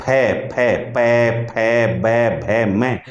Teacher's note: हिंदी का जो फ है उसमें आपको दोनों होट मिलाने हैं